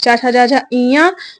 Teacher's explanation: जिन वर्णों के उच्चारण में जीभ का मध्य भाग हमारी पूरी जीभ है ना जब आप एक आध किताब में देखे होंगे पूरा जीभ का बनेगा तो अग्र भाग पश्च भाग मध्य भाग। तो जीभ का मध्य भाग तालु से स्पर्श करता है तो तालव्य वर्ण कहलाते हैं वो।